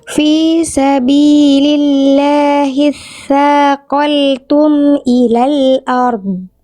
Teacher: bagus, tinggal di saqaltum, ada mantul dikit lam sukun ya. lam sukun tidak boleh dibaca memantul ya, karena lam nggak punya sifat qalqalah